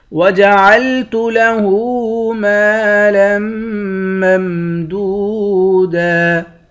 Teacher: لام کو میم مشدد کے ساتھ ملا کر میم پر غنہ کریں گے۔